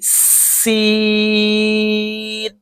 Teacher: जुबा की नोक जब ऊपर और नीचे की अगले दोनों दांतों के दरमियान आ जाए सीटी की आवाज आएगी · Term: सीन